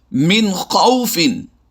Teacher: یعنی یہاں پر ہم نے نون ساکن میں غنہ نہیں کیا، بالکل آواز کو ظاہر کر کے پڑھا ہے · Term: اظہار